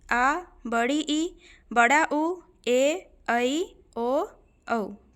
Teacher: दीर्घ स्वर, इनके उच्चारण में ह्रस्व स्वरों की तुलना में दुगुना समय लगता है